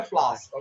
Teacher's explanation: if it's British, they tend to avoid the R sound, so they just say flowers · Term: without the R